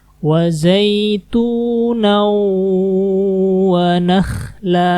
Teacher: fathatain ketemu waw, dimasukkan dan ditahan